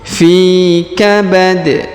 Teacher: huruf Fi dipanjangkan dua harakat karena di depannya terdapat Ya Sukun